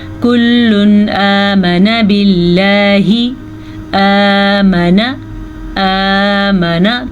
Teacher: نون ساکن یا تنوین کو ظاہر کر کے بغیر غننے کے پڑھتے ہیں